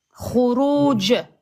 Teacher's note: À l'arrêt, ça serait khuruj avec une qalqala sur le jim.